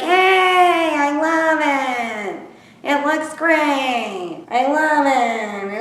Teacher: New Jersey has this weird vocal fry too